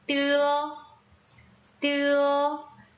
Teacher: 두 번째 성모는 설점음인데요. 설점음은 혀끝을 윗니의 안쪽 잇몸에 살짝 댔다 떼면서 소리를 내주면 돼요